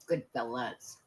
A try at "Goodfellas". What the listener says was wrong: Sound like you said fellows.